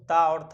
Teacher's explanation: यानी कि अगर हम बात करें क और ख की तो ये अघोष होंगे।